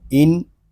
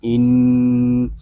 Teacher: با ساکن میں کلکلا، وقف بالاسکان۔ آگے حمزہ نون زیر ان، یہاں نون مشدد ہے، اس میں غنہ کریں گے کیونکہ نون مشدد میں ہمیشہ غنہ ہوتا ہے